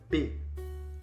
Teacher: B de bola. Quando você fala B, os seus lábios se unem. É uma bilabial, porque fecha os seus lábios.